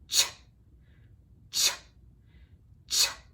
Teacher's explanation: And one way you can practice this is by thinking about making the t, t, t sound, the T sound, and then adding an SH to that. So your tongue is gonna act like it's making a T and then you're gonna add a SH, and when you put those together, you get a CH sound.